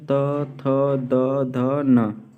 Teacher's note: ठीक है, और द से हो जाएगा दंत, अर्थात त वर्ग का उच्चारण स्थान क्या है? दंत है